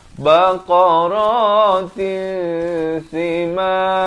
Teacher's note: Di sini idgham bi gunnah. Masuk beserta dengung.